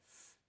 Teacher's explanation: quando a gente pronuncia F, a gente percebe que a nossa garganta ela não vibra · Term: consoante surda